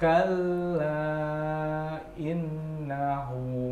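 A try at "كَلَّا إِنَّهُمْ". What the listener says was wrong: Ya, nunnya tadi kurang panjang ya. Sekali lagi.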